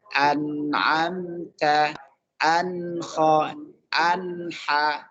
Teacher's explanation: dengan posisi lidah terangkat ke langit-langit, ke gusi atas dengan sekedar menempel saja, jangan ditekan. Kemudian posisi gigi ada jarak, an, dan geraham bawah ini turun ke bawah.